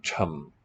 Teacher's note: I think voiceless, aspirate. The third tone is falling.